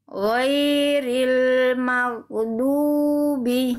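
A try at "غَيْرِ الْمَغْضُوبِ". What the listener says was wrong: Ah, itu mantul lagi, jangan mantul. Ghairil maghdubi. Maghdubi. Di ujungnya hilangkan bunyi e-nya. Maghdubi.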